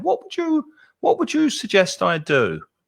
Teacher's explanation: the intonation would start high and then go down